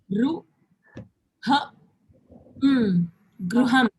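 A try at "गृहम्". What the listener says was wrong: Ha. If you say ha, it's a complete letter. So here now you have to say h. Gru. Gruham.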